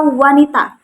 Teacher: ketika mengucapkan kata wanita atau mengucapkan konsonan w itu udara yang keluar itu hampir mirip dengan ketika kita mengucapkan vokal U begitu. Jadi udara yang keluar itu hampir sama tetapi ketika mengucapkan konsonan W ini tidak selancar vokal U gitu. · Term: semivokal